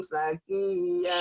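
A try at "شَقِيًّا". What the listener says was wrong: Shin. Syakiya. Jangan sakiyah. Syakiya.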